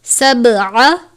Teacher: قلقلہ کے معنی ہے جنبش یعنی حرکت کے، جس حرف پر قلقلہ کرتے ہیں اس کو ظاہر کر کے پڑھتے ہیں، جیسے آپ نے سبع نہیں پڑھنا، با کو ظاہر کرنا ہے کہ با پر قلقلہ کیا ہے، سبع اس طرح سے۔